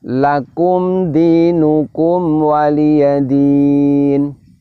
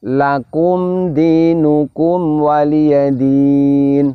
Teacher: bunyi mim sukunnya itu jelas, namun walaupun jelas tetap ada dengungnya. Hanya saja dengungnya adalah dengung pendek. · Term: Idhar syafawi, idhar safawi